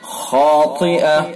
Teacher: خا کو بھی پر، الف کو بھی پر، طا کو پر